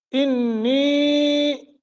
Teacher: انی، یہاں غنہ کریں گے اور نی کو لمبا کریں گے کیونکہ یا ساکن ما قبل کسرہ ہے.